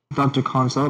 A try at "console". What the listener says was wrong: You're not adding an O at the end, you're saying console.